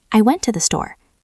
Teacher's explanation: Went to becomes wenta. To the becomes ta the.